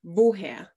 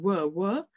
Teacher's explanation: So the W sound in German is called labiodental. So which means your teeth touch your lower lip. Yeah, so it's not like the English sound where it's a W, W, a Y in English.